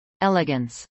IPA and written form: ˈɛləɡəns (elegance)